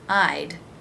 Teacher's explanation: In the word I'd, it's simply a D sound at the end of the I as in by diphthong